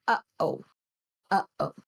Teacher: the little hiccup noise after the first uh is a gladle stop okay so uh oh uhoh hm would · Glottal stop is a stop sound made by rapidly closing the vocal folds.